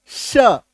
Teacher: तालु से जिसका उच्चारण निकले उसको कहते हैं तालव्य स